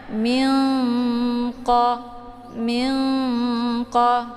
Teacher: dengan aba-aba karena nun-nya dengan qof yaitu makhrajnya saling berjauhan jadi cara bacanya yaitu disamarkan Nun nya kemudian siap-siap masuk ke huruf qaf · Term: Ikhfa